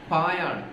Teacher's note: രണ്ട് ചുണ്ടുകളും ചേർത്ത് വെച്ചുകൊണ്ട് നമ്മൾ ഉച്ചരിക്കപ്പെടുകയാണ് പ എന്ന്